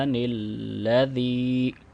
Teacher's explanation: زی چونکہ یا مدہ آ رہی ہے تو 2 سیکنڈ اس کو لمبا کریں گے